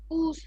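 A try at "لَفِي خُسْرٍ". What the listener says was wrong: খুসর। রটা শেষে গিয়ে যেন একটা উচ্চারণ হয়, বোঝা যায় যেন যে র আছে, হ্যাঁ? লাফি খুসর। খুসর।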